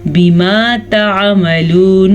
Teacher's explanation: नून को खींच के नहीं पढ़ना क्योंकि नून पे ज़बर है।